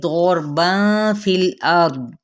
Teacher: دود بھی پر را بھی پر پڑا جائے گا